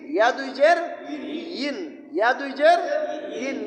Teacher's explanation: জিব্বার মধ্যখান থেকেই উচ্চারণটা করতে হবে